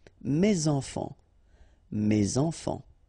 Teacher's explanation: Enfant, children is starting with a vowel, so you should make the liaison